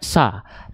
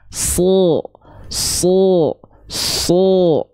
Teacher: Contohnya huruf shad. Huruf shad itu huruf yang tebal. Maka ketika fathah dia nggak dibaca sa, tapi dia dibacanya so tebal